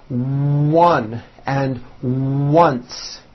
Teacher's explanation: the W sound occurs in some words beginning with the letter O